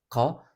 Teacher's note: boğazla ağzın arka kısmındaki o dirseğe baskı yaparak bile baskı yaparak çıkartılan bir ses ka sağlaması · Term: Kaf